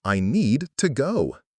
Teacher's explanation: The D in need and T in to are made in a similar place in your mouth. We don't say need to go. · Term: consonant to consonant linking